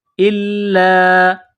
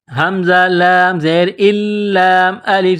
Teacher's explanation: حمزہ کو لام کے ساتھ پلس کرنا ہے، لام میں سختی کرنی ہے